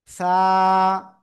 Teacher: জিহ্বার আগা সামনের উপরে দুই দাঁতের আগায় লাগাবো, লাগিয়ে আমরা জাস্ট এক আলিফ টানিয়ে নরম সুরে আমরা উচ্চারণ করব